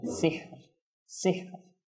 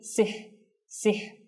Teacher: দেখুন, অনেক সময় আমরা এই অর্থাৎ কোনো শব্দের শেষে আসলে তখন ওয়াকফ করার সময় কে ভালো করে উচ্চারণ করি না। তো যখন আপনি রর উপর ওয়াকফ করবেন তখন এই রটাও কিন্তু সেখানে আপনার উচ্চারণ আসতে হবে, সিহর সিহর, অর্থাৎ লাস্টে রর উচ্চারণটা একটু হতে হবে। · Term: র সাকিন